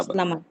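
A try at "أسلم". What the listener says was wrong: হ্যাঁ, টানতে হবে না, আসলামা।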